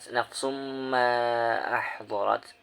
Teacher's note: Pada ayat ke-14 alimat nafsum ma ahdarat, itu terdapat idgham bi gunah, sebab ada tanwin bertemu dengan huruf mim, ketika dibaca harus didengungkan